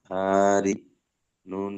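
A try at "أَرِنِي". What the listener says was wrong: আরে নি, দুটো টান হবে না, হামজা দাবারটা আর রয়েজেরটা, এই দুটো হারাকাত আছে, এই দুটো টান হবে না। আরে নি, নুন ইয়াজের নি আছে হরফে মাদ্দা, ওটা টান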